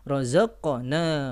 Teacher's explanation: cukup memisahkan kedua sisi makhraj dari huruf qaf, ya, tidak perlu diakhiri dengan hamzah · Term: qalqalah sughra